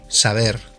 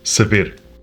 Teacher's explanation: Portuguese doesn't have the soft B.